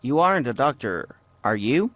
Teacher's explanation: notice how the intonation goes up when the speaker is not sure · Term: rising intonation